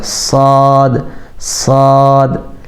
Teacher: صاد میں سین کے مقابلے میں تھوڑی سی آواز میں سختی ہوگی اور سیٹی جیسے بجاتے ہیں اس طرح صاد کیا، صاد صاد۔